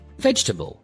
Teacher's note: Instead of veg gel, they say varl. The middle sounds almost disappear.